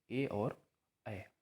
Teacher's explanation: कंठ तालव्य मतलब कंठ और तालु दोनों के साथ बोला जाता है, इनका मतलब कि कंठ का भी प्रयोग होता है और तालु, इन दोनों का प्रयोग होता है।